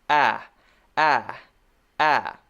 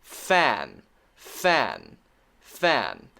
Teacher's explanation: when we have the a sound the tongue is even more relaxed in the back of the mouth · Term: short a